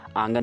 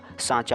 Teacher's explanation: अनुनासिक के उच्चारण में नाक से बहुत कम सांस निकलती है और मुंह से अधिक